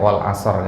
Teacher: meskipun wakaf harus ada hurufnya di situ, ya. Harus ada bunyi ro-nya sedikit.